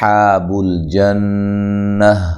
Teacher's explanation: حاب الجنہ، جب ہم وقف کریں گے تو یہ گولتا جو ہے یہ ہائے ساکنہ میں تبدیل ہو جائے گی۔ نون مشدد پہ غنہ ضروری ہے، اور غنہ کی مقدار بھی 1 الف ہوتی ہے